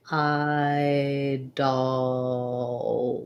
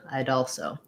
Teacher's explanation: we tend to just link that d and the a there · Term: linking